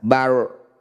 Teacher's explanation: atau Lun barzun ro sukun didahului fathah disebut bacaan ro tafkhim tafkim itu artinya tebal jadi ro bunyikan tebal dengan cara mengangkat ujung lidah sampai menempel di langit-langit lisan Bar atau sederhananya bunyi ro jangan terlalu berlebihan getarannya kurangi getarannya · bunyi ra jangan terlalu berlebihan getarannya, kurangi getarannya. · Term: ra tafkhim